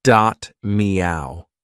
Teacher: also has a very distinct Liverpool or Scouse accent. Did you notice he said me instead of my?